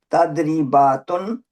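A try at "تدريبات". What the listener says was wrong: नहीं तुन नहीं है, तदरीबात बस।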